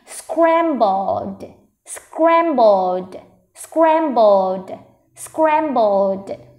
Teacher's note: Trọng âm rơi vào âm đầu tiên nên mình sẽ đọc to âm đầu tiên hơn nhé.